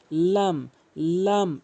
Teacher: লাম হরফটি জিহ্বার আগা উপরে তালু থেকে